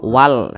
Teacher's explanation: samping yang kotak warna merah seharusnya wa dibaca panjang akan tetapi huruf wa tidak dibaca panjang dibaca pendek Karena di depannya ada huruf yang sukun atau ada huruf yang mati n maka wa dibaca pendek dibaca